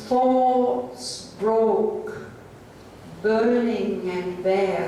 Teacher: There's a distinct pause between broke and burning.